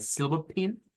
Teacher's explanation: que es una mezcla entre I y e para el Silver pin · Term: i corta